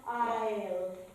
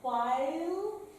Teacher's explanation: So it goes from a bright ah to an open I sound. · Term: diphthong